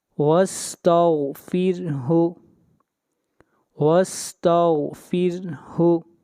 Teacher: را سے پہلے زیر آ رہی ہے، اس لیے را کو باریک کر کے پڑھیں گے